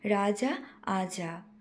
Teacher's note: কামরূপী উপভাষার ধ্বনিতাত্ত্বিক বৈশিষ্ট্য হল পদের শুরুতে অবস্থিত র ধ্বনি লোপ ঘটে